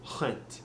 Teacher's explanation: you almost want to roll it a little bit and keep it breathy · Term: different kind of R